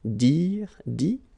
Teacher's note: phonetically it's I as well because you don't pronounce the final T